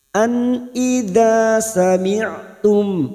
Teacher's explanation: nun sukun bertemu hamzah idhar halqi, nun sukun dibaca jelas tanpa mendengung